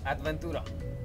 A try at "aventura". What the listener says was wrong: Without the D, aventura.